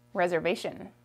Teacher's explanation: the s makes a z sound